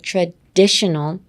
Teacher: Next, traditional. Emphasis on the di.